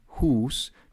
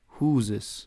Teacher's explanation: the s in hus becomes a z in the plural huses